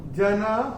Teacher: ना के बाद विसर्ग चरण की समाप्ति पे आ रहा है, तो इसका उच्चारण केवल और केवल ह ही होगा।